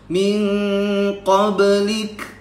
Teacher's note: Ini min masuk hidung dan namanya ikhfa ab'ad, jauh.